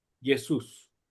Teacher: Como el acento está en la U, se pronuncia de esa manera.